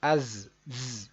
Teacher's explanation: یہ آواز ہلکی سی آنی چاہیے سیٹی کی، از. حمزہ زا زبر از، زا زبر زا، عزا.